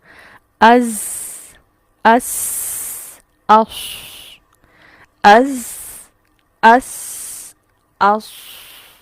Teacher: ऊपर नीचे के दांत खुद से करीब आ जाते हैं और इन दोनों के अंदरूनी किनारों से जुबान की नोक लगती है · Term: असलिया